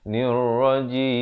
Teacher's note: Di akhir baru ditutupkan mulut menyempurnakan bunyi mim